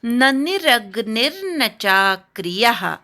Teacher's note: नी नंतरचा जो र आहे त्याच्यावर आघात येईल.